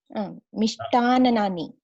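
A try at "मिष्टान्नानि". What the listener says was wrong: No, not too many nakaras. Mishtanani only. The last A is replaced by Ani. Mishtanani. This is a bit confusing because so many nakaras are there. But you should say Mishtana. That at least that, but not Mishtani. The last letter here, it's not replaced by E.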